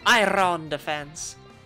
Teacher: with my accent, actually, if I don't roll the R's, I won't say them.